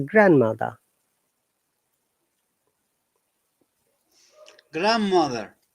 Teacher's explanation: you remember in some words we do not pronounce letter d in this case the word grandmother the d is silent · In this case, the word grandmother, the D is silent, it's grandmother.